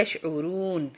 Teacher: را پیش واو رو یہ تھوڑا سا بس ذرا سا معمولی سا کھینچنا ہے کیونکہ یہ واو مدہ آ رہی ہے یشعرون، وما الا انفسہم وما یشعرون۔